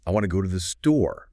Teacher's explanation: want, go, and store. Those are the words that pop. They carry the stress, but the little words like to and the f, they often get well swallowed a bit, as the source puts it.